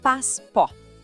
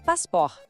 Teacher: O T no final a gente não pronuncia, ele é mudo.